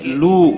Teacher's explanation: واو مدہ ہے، ایک الف کے برابر کھینچ کر پڑھیں گے